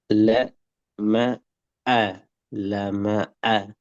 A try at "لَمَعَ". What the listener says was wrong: அந்த உடைஞ்சி வாரது பில. மற்றபடி சரி. ல ம ஆ ல ம ஆ ல ம ஆ சேரணும்.